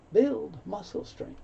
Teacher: No sound for the G, so you hear strength.